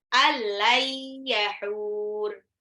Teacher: Lai, nah ini baru ditahan. Nun sukun dilebur ke ya tapi ditahan biar terdengar gunnahnya seperti apa.